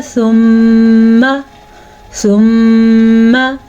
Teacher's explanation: मीम पे शद की वजह से गुन्ना बन जाएगा। ये गुन्ना नून पे शद की वजह से बनता है और मीम पे शद की वजह से बनता है।